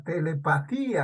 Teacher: Vocal cerrada la I, vocal abierta la A. En telepatía la I suena con más fuerza. Por eso presenta hiato acentual.